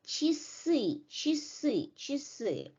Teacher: E is stressed, but A is unstressed, and it becomes E, right? So the unstressed vowels A, Ye, and Ya are pronounced as a short E.